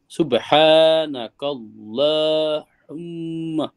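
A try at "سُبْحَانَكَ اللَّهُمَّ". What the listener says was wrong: ল হবে, লা হবে না, যেহেতু আল্লাহ শব্দের আগে জবর আছে এখানে।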